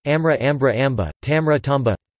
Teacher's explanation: The sequence mr becomes mb, via the epenthesis of a stop between the nasal and liquid